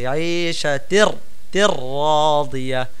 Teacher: তানবিনের পরে র আসছে, রকে তাসদিদ দিয়ে গুন্না ছাড়া আমরা পড়তেছি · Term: ঈদগামে বিলাগুন্না